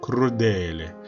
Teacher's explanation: 근데 루가 강세가 아니죠. 어디가 강세입니까? 애가 강세.